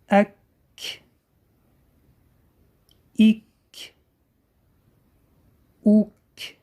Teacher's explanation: Буква Каф образуется, когда корень языка касается твердого неба. Чтобы нашли махрадж буква Каф, местообразование буква Каф, перед Каф ставим алиф и произносим ак, ик, ук.